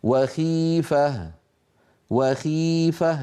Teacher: لاحظوا بأن صوت الخاء أيضا ليس فيه تفخيم شديد لأنها مكسورة